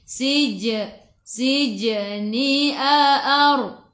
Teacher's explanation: Sij qalqalah surah, lantunannya kecil.